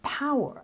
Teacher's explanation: The noun power, accent on the first syllable.